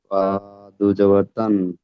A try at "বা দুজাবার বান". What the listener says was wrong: বা দুজাবার বান হয়, তান কি করে হবে? বা, বা বা দুজাবার বান,